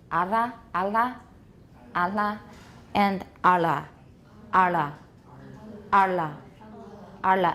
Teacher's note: hold your tongue a little bit longer and you get air out the side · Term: lateral tap